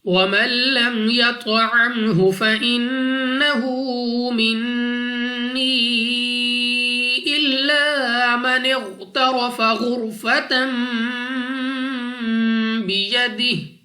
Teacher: نون مشدد غنہ کر کے پڑھیں گے، ناک میں لے جا کر پڑھنا ہے